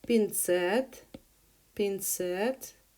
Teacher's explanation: Pincet with the stress on the second syllable